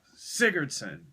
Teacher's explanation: the stress is on the first syllable, not the second syllable.